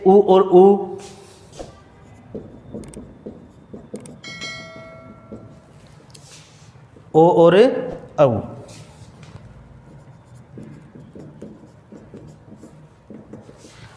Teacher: और ओष्ठ के आधार पर या ओष्ठों की गोलाई के आधार पर आप देखोगे कि जिनके उच्चारण में होठों का आकार गोल हो जाता है वो वृत्ताकार, और नहीं होता है तो अवृत्ताकार।